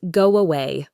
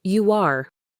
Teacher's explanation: If the first word ends in a sound like O or U, where your lips are rounded, we often add a tiny W sound.